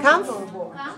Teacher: stress the first syllable so 3-1 3 1 is the syllable stress code for comfortable